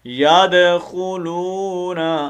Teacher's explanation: دال جب ساکن ہو تو اس وقت اس کا کلکلہ ہوتا ہے